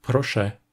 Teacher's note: la voyelle ę a tendance à perdre sa nasalité et à être prononcée simplement [ɛ]